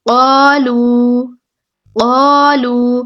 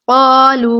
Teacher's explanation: الف مدہ ہو رہا ہے پہلے، اس کو بھی ہم نے 2 حرکات لمبا کرنا ہے. بعد میں دیکھیں لام کے پیش ہے اور اس کے بعد واو ساکن ہے، یہاں پہ واو مدہ ہو رہا ہے، اس کو بھی ہم 2 حرکات لمبا کریں گے.